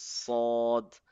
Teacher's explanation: there is an O sound in it because it's a heavy letter. So this is sod.